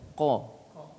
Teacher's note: Iya, karena setiap huruf ada sifat. Iya, seperti qa itu dia memiliki sifat isti'la. Maka harus terangkat lidah.